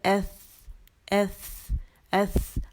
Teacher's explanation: ایس ایس, ہاتھ پہ باقاعدہ ہوا فیل ہوگی